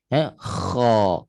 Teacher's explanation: Isti'la merujuk kepada pangkal lidah terangkat. Bila pangkal lidah terangkat, suara itu tertolak ke atas dan dia menebal kat situ bunyi dia.